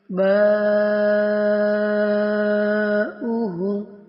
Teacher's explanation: چار الف کی مقدار کے برابر کھینچ کر پڑھیں گے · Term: مد متصل